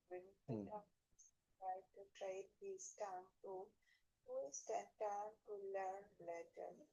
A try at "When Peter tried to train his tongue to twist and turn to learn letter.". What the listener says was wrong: T, letter T, এখানে একটা T রয়েছে। লেটার টি, টি রয়েছে ওখানে একটা টি শব্দ রয়েছে। Learn letter T, yes. To learn letter T, to learn letter T.